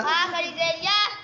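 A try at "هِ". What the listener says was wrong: یا کدھر آ گیا ہا کھڑی زیر ہی دونوں کو لمبا کرنا فی ہی پڑھو واو زبر سے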